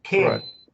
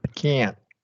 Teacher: In the full version of can't, you're going to articulate the T, bring your T up to the T position, but you're not going to release it. You're going to do a stop T.